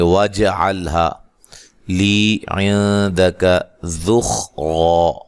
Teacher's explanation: اچھا، ضاد کو موٹا ادا کرنا ہے، نون مشدد پہ غنہ ضروری ہے، یا مدہ ہے، بہا الف مدہ ہے.